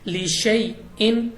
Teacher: یا ساکن سے پہلے زبر ہے تو یا لین ہے، ہم نے جلدی پڑھنا ہے